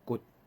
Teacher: 骨头的骨第四声，我则用一点表示讲伊即个时间较短啦